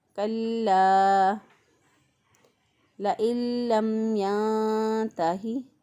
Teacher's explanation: لام کے اوپر شد ہے، مضبوط اور قوت سے ادا کریں گے